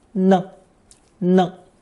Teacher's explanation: it functions as a very useful sentence particle pronounced with a neutral tone